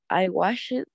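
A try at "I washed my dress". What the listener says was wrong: Acuérdate que no es wash it. La E muere. I washed.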